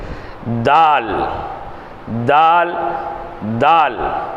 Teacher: தால் தால் தால் தாலும் ஏறத்தால் அதே மாதிரி தான், ஆனால் கொஞ்சம் கனத்த குரலோடு அதை சொல்லணும். பாருங்கள், நாவின் நுனி முன்பற்களின் மேல்முரசில் படுமாறு உச்சரித்தல்.